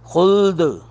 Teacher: دال ساکن پر قلقلہ کریں گے خلد د کی آواز آئے گی